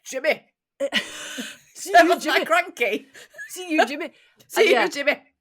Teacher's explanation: strong guttural and fastpaced and with rolled Rs